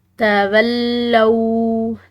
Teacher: لام کے بعد واو ساکن کی وجہ سے اس لام کو ہم نے لمبا ادا کیا ایک الف کے برابر، اور یہ مشدد لام ہے تو اس کو ہم نے پریشر اور دباؤ سے پڑھنا ہے۔